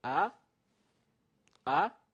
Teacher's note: tones ah that's the first tone it's a high tone then the second is a rising tone ah ah like a question